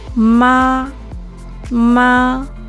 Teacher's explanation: Es alto y plano. Ma. Y el segundo ma es de tono ligero. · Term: primer tono